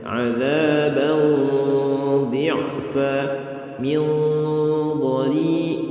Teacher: Dad masuk ke huruf isti'la, dibaca tebal, ya, samarnya. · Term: samarnya tebal